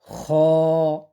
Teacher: অনেকেই খা উচ্চারণ করি এটাকে এটা ভুল শুদ্ধ উচ্চারণ হলো খ মুখটা গোল হবে এবং উপরে নিচে লম্বা হবে ঠোঁটটা পাশের দিকে কোন ছড়াবে না